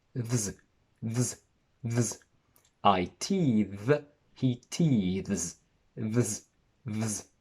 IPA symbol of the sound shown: ðz